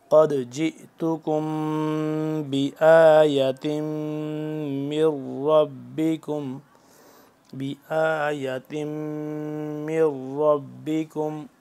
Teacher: ساکن میم کے بعد با جب آ جائے تو اس پہ بھی اخفا کرتے ہیں، یہاں پہ بھی اخفا کریں گے۔